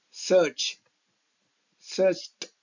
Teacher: ఇక్కడ చ్ అనే సౌండ్ తో ఎండ్ అయింది వర్డ్. దీనికి ఈడి కలిపితే ఆ సౌండ్ ని ట్ చదవాలి.